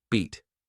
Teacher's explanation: Beat. Longer, clearer. Like the E in C.